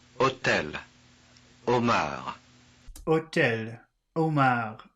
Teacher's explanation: it doesn't seem like they pronounce the h in either of those words